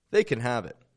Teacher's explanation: we are dropping that a and we're linking can to the words around it